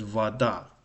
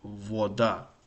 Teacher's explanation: So a is stressed. So this is very interesting because o occupies an unstressed position. So it's vada, not voda.